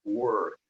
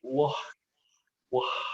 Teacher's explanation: We have this R sound, work. In Rio, they may say wah, wah